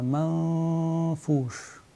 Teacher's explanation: cacher le nun sakin dans la lettre fa, mais en même temps, il faut soutenir cette runna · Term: ikhfa